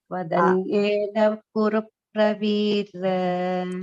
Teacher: Twadanyena, there is no Mahapranaha there. It is just Alpa Pranaha.